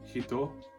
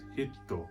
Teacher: this is like a hard stop in a word that's represented by a small tsu hiragana or katakana character